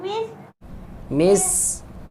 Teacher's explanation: سین کی سیٹی آئے گی, آواز آئے گی سیٹی کی